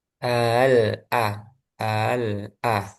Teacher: Sehingga kalau dirinci lagi di sini setelah sukun kemudian huruf setelahnya itu idhar. Jadi lam bertemu hamzah kan lamnya dibaca jelas. Nah, sehingga dia idhar.